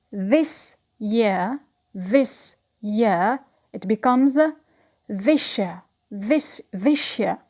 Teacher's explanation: when the first word ends with s and the second word starts with u, they come up with the sound sh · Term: palatalization